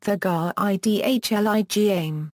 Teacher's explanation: Use of the glottal stop is a distinct characteristic of the Southern Mainland Argyll dialects of Scottish Gaelic.